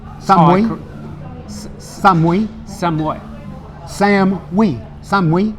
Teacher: it's always going to be that last syllable's a rising tone